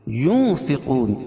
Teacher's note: ينفقون اخفاء حقیقی، کیوں؟ اس لیے کہ نون ساکن کے بعد حروف اخفاء کے 15 حرفوں میں سے فا ہے، تو یہاں ناک میں آواز کو چھپا کر پڑھیں گے